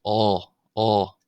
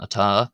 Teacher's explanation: In Munster and Connacht, generally one will hear the A pronounced as an aw, closer to what we have in our English word law, aw, as opposed to in Ulster, as an ata, as opposed to atá, atá, atá.